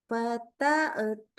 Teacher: Lalu kita tawalud pada saat hu hamzah sukun. Tawalud itu suaranya mantul-mantul. Jadi kayak ada bunyi e.